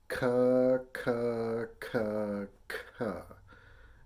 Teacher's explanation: if you're paying attention to your tongue, you're using the back of your tongue somewhere around this part, right? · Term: K sound